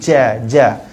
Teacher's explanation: kalau kita sebut huruf Jim pakai hujung lidah hujung lidah ni kena dekat langit-langit akan ada angin